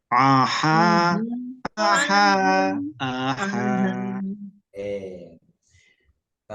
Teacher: Perhatikan, huruf ain dan huruf ha karena berada di tempat berada di tengah-tengah tenggorokan, maka pita suara yang ada, pita suara itu terasa menyempit ya. Pita suara yang ada di tenggorokan kita terasa menyempit ya, sehingga kita ketika mengucapkan itu terasa agak sedikit berat ya. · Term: ain dan ha